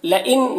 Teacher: نون میں اظہار حقیقی ہو رہا ہے، اسے جلد پڑھنا ہے